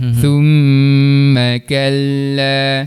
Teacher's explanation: Mim baris atas dibaca pendek. Sebab apa? Sebab tak ada huruf mat selepasnya.